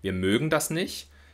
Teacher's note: wenn wir also sagen zum Beispiel wir mögen das nicht dann sprechen wir den langen gespannten ölvokal